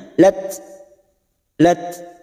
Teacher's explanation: Fathah diikuti alif 2 harakat. Qalat, tak sukun mempunyai sifat hamas. Pada saat dibaca maka bunyinya lat.